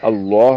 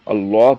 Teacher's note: اس کو باریک نہیں، لام کو موٹا کر کے پڑھتے ہیں